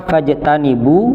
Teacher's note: Nah, ketika berhenti pada lafadz itu, kalau tadi tidak berhenti fajtanibu, bu-nya dibaca pendek karena bertemu hamzah wasal pada lafadz ar-rijsa. Tapi ketika berhenti, maka fajtanibu, bu-nya harus dibaca panjang.